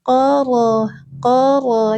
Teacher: Huruf menggetarkan punggung ujung lidah ke gusi atas dengan satu getaran.